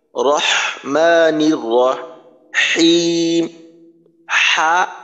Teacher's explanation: হা যখন উচ্চারণ করবেন এই যে মাথা বাঁকা হা তখন গলার মাঝখানে আরেকটু চাপ দেওয়ার চেষ্টা করবেন